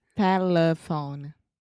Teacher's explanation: Yeah, so the schwa is the middle syllable.